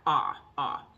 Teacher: ah, way down at the bottom, in the back